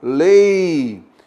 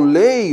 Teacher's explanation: a vogal é o E, é o som mais forte. Já o I é a semivogal